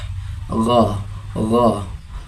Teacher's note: makharijul hurufnya berada pada pangkal lidah dan langit-langit mulut yang berdaging, seperti suara G namun lebih rendah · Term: huruf ghain